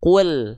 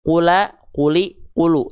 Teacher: Nah, maka lamnya cukup dibaca kul, bukan kula, kuli, kulu. Dia tidak berbunyi vokal a, i, u karena dia sukun.